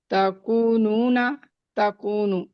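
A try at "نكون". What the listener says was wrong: नहीं नहीं, नकूनो। बात याद रखें, आपने इसकी या की हरकत खींच दी है, तो अब लिखने में भी आपने गलत लिख सकती हैं, तो इसको सही तरह प्रोनाउंस करें।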